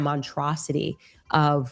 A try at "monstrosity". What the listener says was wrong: monstrosity. There's definitely an S in there. This is a monstrosity.